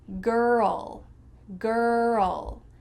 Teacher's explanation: In American English, we're gonna insert a U sound. This is called the schwa sound after the R.